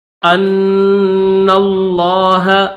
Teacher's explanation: حمزہ کو نون کے ساتھ ملائیں گے اور نون کو لفظ اللہ کے لام کے ساتھ ملائیں گے